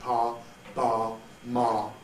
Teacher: to be more precise, since both lips are used, they are bilabials